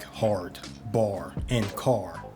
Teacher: British English was rhotic, meaning they pronounced the R in words like hard, bar, and car